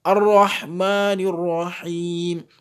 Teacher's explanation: Donc, ici, l'erreur, ce serait de lire le mot Al-Rahman Ar-Rahim. Donc, le lam ne doit pas être entendu dans la lecture. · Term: lam solaire